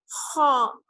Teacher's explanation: زبان جو ہے آپ کی تھوڑی سی چوڑی ہو جاتی ہے اور آواز تھوڑی سی بھاری ہو جاتی ہے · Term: موٹا